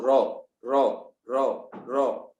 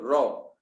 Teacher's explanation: रॉ में आपको लगेगा कि रॉ में जीभ कहीं ना कहीं दांतों को छू के निकल जा रही है।